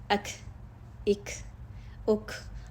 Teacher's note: शिद्दा पहले आया, सांस रुकी, काफ को अदा करते सांस रुकी, और हम्स की सिफत बाद में आ गई। पहले शिद्दा की को, पहले उसमें शिद्दत पाई जा रही है, बाद में उसकी हम्स की सिफत पाई जा रही है।